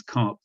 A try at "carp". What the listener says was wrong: I think you said car, not carp. Carp.